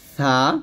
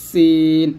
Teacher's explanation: আপনি যখন সাটা উচ্চারণ করবেন তখন জিহ্বার আগাটা উপর দাঁতে লাগাবেন সা, আর সিন যখন উচ্চারণ করবেন জিহ্বাটা নিচে দাঁতে মাঝে লাগাবেন সিন, এরকম। তাহলে এটা হবে সা জবর সা, এটা সিন জবর সা।